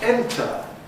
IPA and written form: ˈentə (enter)